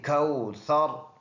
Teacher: کھل کوثر، یہ واو لین دوبارہ آیا ہے، واو ساکن سے پہلے ورڈ پر زبر ہو تو اس کو واو لین کہلاتا ہے، اور سا نرم حروف میں سے ہے، اس کو ہم نے نرم پڑھ کر ادا کرنا ہے۔ زبان کو تھوڑا سا نکال کر سامنے کی جو داند ہے اس کے ساتھ جب لگے گے تو یہ سا اس سے نرم ادا ہوگا